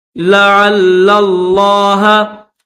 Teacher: عین کو اس لام کے ساتھ ملائیں گے اور اس پہلے لام کو لفظ اللہ کے لام کے ساتھ ملا کر پڑھیں گے